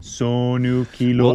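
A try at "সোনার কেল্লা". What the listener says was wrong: Well, aside, the ah sound is correct, but whenever there's, it's not just the O sounds, but instead of it being sonar, the S-O has a sh sound to it. So it's shonar. There's no ko. It's Sonar Kella, the Golden Fortress.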